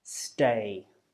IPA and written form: steɪ (stay)